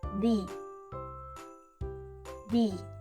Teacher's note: we start with the sounds where your tongue gently touches your front teeth, like in the word think. Then, we add a long E sound, like in see.